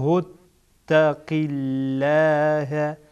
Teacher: اینجا لام جلاله باریک خوانده میشه